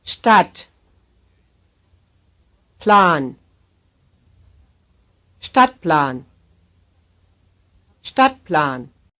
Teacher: The first syllable is tensed, the second not.